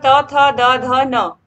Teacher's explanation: जो त वर्ग होता है इसका जो उच्चारण स्थान होता है वह दंत ही होता है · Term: दंत व्यंजन